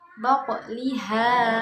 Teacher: Di situ ada huruf qalqalah yaitu huruf qaf. Nah, huruf qaf ini huruf qalqalah dan mati karena sukun ya. Jadi cara bacanya dipantulkan dan pantulannya hanya setengah. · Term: qalqalah sughra